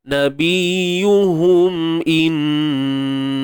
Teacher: Huruf lam di sini pada kalimah Allah ni perlu ditebalkan. Sebab apa? Sebab sebelumnya terdapat huruf yang berbaris atas.